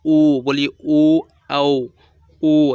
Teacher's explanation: ओ हमारा ओठ भी गोल हो रहा है